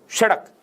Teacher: बोलो सड़क, क्या किया जिह्वा ने? जिह्वा ऊपर वाले मसूड़े को छूती है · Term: उत्क्षिप्त वर्ण